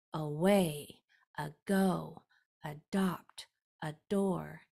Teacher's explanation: the a will never be said stronger than the rest of the word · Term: shwah sound